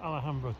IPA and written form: ælˈhæmbrə (Alhambra)